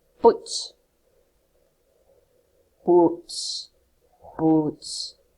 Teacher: You shall not be able to feel your throat vibrate, indicating there is a voiceless consonant.